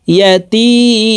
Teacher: তি এখানে 3 আলিফ টেনে মিমকে সাকিন করতে হবে, কারণ মদের হরফের বামের হরফে ওয়াকফ হইলে মধ্যে আরজি 3 আলিফ টেনিয়া পড়িতে হয়।